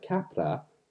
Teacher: you're going from a voiced sound, A, to a voiceless sound, P, to another voiced sound, R.